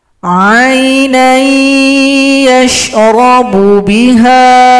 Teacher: didengungkan selama 2 harakat atau 2 ketukan